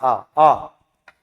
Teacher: विवृत मतलब जब पूरा मुख खुल जाए बड़ा आ। आ।